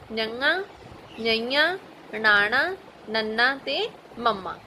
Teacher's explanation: ਜਿਹੜੇ ਅੱਖਰਾਂ ਨੂੰ ਬੋਲਣ ਵੇਲੇ ਆਵਾਜ਼ ਮੂੰਹ ਦੇ ਨਾਲ-ਨਾਲ ਨੱਕ ਵਿੱਚੋਂ ਨਿਕਲੇ, ਉਹਨਾਂ ਨੂੰ ਅਨੁਨਾਸਕ ਜਾਂ ਨਾਸਕੀ ਅੱਖਰ ਕਿਹਾ ਜਾਂਦਾ ਹੈ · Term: ਅਨੁਨਾਸਕ ਅੱਖਰ